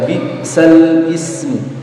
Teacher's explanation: memindahkan harokat hamzah pada huruf sebelumnya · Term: iltiqa'us sakinain